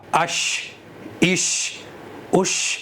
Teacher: ज़बान का बीच ऊपर के तालु पर लगता है और अदा होता है शीन